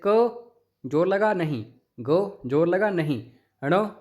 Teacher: अब उसके बाद आ गया अल्पप्राण और महाप्राण। हर एक शब्द का पहला, तीसरा, पांचवा अल्पप्राण होता है। इनको बोलने में ज़्यादा जोर नहीं लगता। जैसे क जोर लगा नहीं, ग जोर लगा नहीं, ण जोर लगा नहीं।